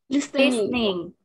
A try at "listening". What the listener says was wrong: Kan? Salah kan? T-nya jangan dibaca. T-nya nggak dibaca. Listen atau listening.